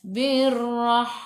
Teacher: Ra sifat hurufnya takrir, kena ada getaran. Birrah. Ra baca dengan tebal, ra baris atas, tafkhim.